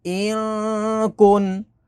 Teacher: اب نون ساکن کے بعد اگلا لیٹر کاف ہے، کاف حروف اخفا ہے تو یہاں پر اخفا ہوگا یعنی غنہ کریں گے